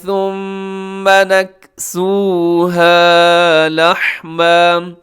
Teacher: ثم بھی مشدد پہ غنہ ہے، لحمن پہ آپ کیا کریں گے، وقف کریں گے تو لحما، اگر وقف نہیں کریں گے ملا کے پڑھیں گے تو یہاں اخفا ہوگا۔